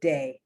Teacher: For they pronounce it with a D, day.